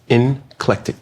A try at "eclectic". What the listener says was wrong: There's no N in it.